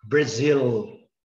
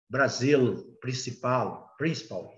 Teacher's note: esse L, ele é para cima. Não é igual o nosso Brasil, que termina com U, não. Termina com L, mas o som, foneticamente, é som de U.